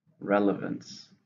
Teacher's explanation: 3 syllables, stress on the first. Relevance.